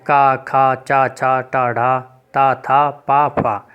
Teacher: जिन व्यंजनों के उच्चारण में कंपन ना हो उन्हें अघोष व्यंजन कहते हैं।